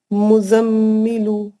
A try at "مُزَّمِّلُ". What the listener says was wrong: نہیں, غلط ہے. نہیں, اردو والا مزمل نہیں, مزم. میں بولوں 3 ٹکڑوں میں پڑھو, آپ ایک ہی ون گو میں پڑھنا چاہ رہے ہیں.